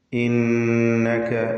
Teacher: 2 ഹറക്കത്തിന്റെ അളവിൽ ഗുന്ന നൽകി ഇന്നക എന്ന് ഉച്ചരിക്കുക